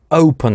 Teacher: слово open она начинает с твердого приступа